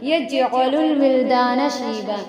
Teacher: جیم حروف قلقلہ میں سے تھوڑا سا آواز لوٹے گی، یعنی اس کو ادا کرتے وقت اس کے مخرج جو ہے ٹکر کھا کر الگ ہو جائیں گے.